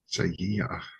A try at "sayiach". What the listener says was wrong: Sayiach. So you got to get the ye. There's a little wiggle there. Do not lose that little wiggle. It's not sayiach. It's sayiach. That's how you do that.